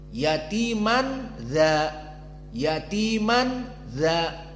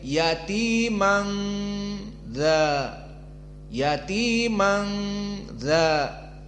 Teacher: Nunnya tersamar, tidak dibaca yatiman, tetapi pindah kepada makhraj khaysum. Wa makhraj khaysum maknanya makhraj hidung. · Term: ikhfa